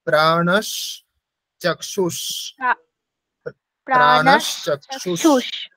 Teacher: বিসর্গের উচ্চারণ তালব্যসা হয়ে যাবে যেহেতু পরে তালবসা আছে প্রাণ স্যার হচ্ছে না আমার প্রাণস চক্ষুস